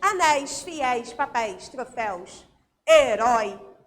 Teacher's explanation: São os ditongos que têm um som aberto, não é eu ou ei. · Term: ditongo aberto